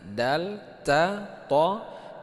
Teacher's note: dal dengan ta itu keluarnya di tempat yang sama